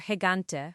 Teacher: It becomes a guttural sound, almost like clearing your throat.